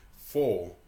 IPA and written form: fɔː (four)